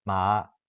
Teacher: For the tone 1-3, so something like ma, the onset is a 1, which means it's a low tone, the lowest tone, lowest pitch. So we use an LL to represent contour 1. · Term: rising tone